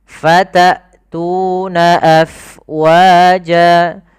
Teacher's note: Kemudian hamzah fatatuna, jelaskan suara hamzahnya karena dia punya sifat yang mencolok, yaitu jahar dan syiddah.